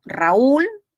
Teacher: Raúl es un hiato acentual Suena la u